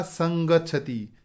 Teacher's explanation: इसी तरह से सम प्लस गच्छति, तो ग ये क वर्ग का वर्ण है। इस वर्ग में अंतिम वर्ण होता है ङ, तो म का ङ बनेगा और शब्द बनेगा संगच्छति